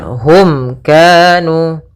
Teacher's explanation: ini kita namakan dengan izhar syafawi, yaitu suara mimnya harus dengan jelas, tidak boleh ditahan